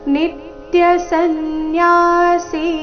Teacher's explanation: ನಿತ್ಯ ನಿ ಮೇಲೆ ಆಘಾತ